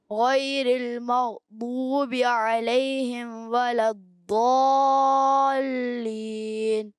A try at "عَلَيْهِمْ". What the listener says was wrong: اچھا آپ علیہم پہ، ہم پہ جو ہے نا اوپر والے دانت نیچے والے ہونٹ سے لگاتے، ہم کر دیتے. ہم نہیں، ہم آپ کے دانت آپ کے دونوں ہونٹ مل جائیں. علیہم کیسے؟ علیہم. غیر المغضوب علیہم ولا الضالین.